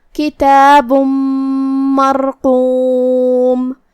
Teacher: کلمت مرقوم میں را پہ جزم ہے تو ہمیں را کو تفخیم سے ادا کرنا ہے، کیونکہ اس سے پہلے والے حرف پہ مطلب حرف المیم پہ زبر ہے، تو ہم را کو بھاری آواز میں پڑھیں گے